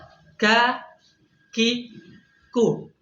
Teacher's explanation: ketika kita mengucapkan huruf Kaf ya maka suara akan terhenti terlebih dahulu baru ada udara yang keluar ya contohnya misalkan ini kalau kita Pelankan ya berhenti dulu suaranya